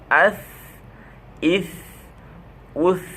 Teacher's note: জিহ্বার আগা সামনের উপরের দুই দাঁতের আগার সাথে লাগাইয়া হালকা বাতাস জারি রেখে পাতলাভাবে আদায় হবে। সায়ে যখন হরকত হবে অর্থাৎ জের জবর পেশ হবে তখন উচ্চারণ হবে সা জবর সাজের সি সা পেশ সু সি সু আস ইস উস।